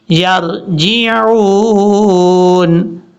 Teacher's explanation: پڑھا جائے گا، اہلہم یرجعون، یرجعون، عین کو کلیئر کرنا ہے، عین کے بعد واو مدہ ہے، اس کو لمبا کرنا ہے ایک الف کی مقدار